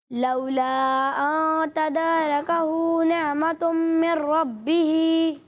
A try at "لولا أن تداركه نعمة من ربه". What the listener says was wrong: مت پوری نہیں کی. نہیں، آئین میں جھٹکا تو نہیں دیا تھا. ان کی غلطی یہ ہے کہ انہوں نے مد منفصل کو پورا نہیں کیا اور را کو بھی باریک پڑھا.